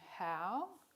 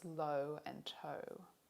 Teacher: 2 other Australian English diphthongs have U as their end point. These are back-raising diphthongs.